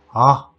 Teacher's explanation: This one is articulated with an open or a loose throat and it's low in tone.